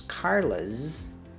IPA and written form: ˈkɑrləz (Carla's)